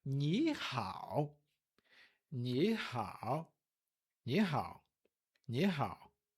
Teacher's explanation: a primeira palavra muda para o segundo tom e depois terceiro tom. Ou seja, a gente sobe, desce, sobe de novo.